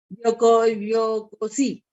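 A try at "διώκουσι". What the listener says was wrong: Diocusi. Ese OU suena U, ¿no? Suena como una U. Diocusi.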